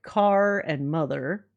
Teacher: General American speakers pronounce R in words like car and mother.